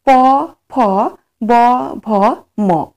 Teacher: প বর্গের যে বর্ণগুলি রয়েছে, সেই বর্ণগুলির উচ্চারণে অধরের সঙ্গে ওষ্ঠের স্পর্শ হয়